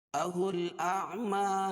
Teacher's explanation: हमज़ा और आइन दोनों को अलग अलग करके पढ़ेंगे